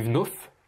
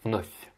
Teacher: Le V qui se prononce comme un F, il faut que tu le mouilles.